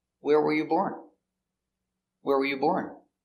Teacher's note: It's an information question, so the intonation goes down at the end.